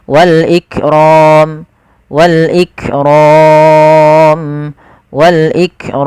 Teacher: Nah, inilah yang kita namakan dengan mad arid lis sukun. Panjang untuk mad arid lis sukun sendiri itu kita boleh memanjangkan 2 harokat, boleh 4 harokat, boleh pula 6 harokat.